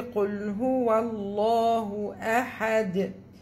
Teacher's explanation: The lamb in لفظ الجلالة is heavy because we have فتحة in front of it